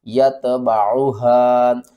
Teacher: مد منفصل ہے، اس کو 3 الف کے برابر کھینچ کر پڑھیں گے